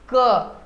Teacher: आप क बोलिए, यहाँ कंठ पे भार पड़ेगा।